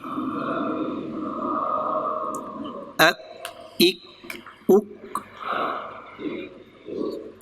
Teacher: اس کا مخرج تھوڑا سا آگے منہ کی طرف ہے، زبان کی جڑ اور تالو کا سخت حصہ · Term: کاف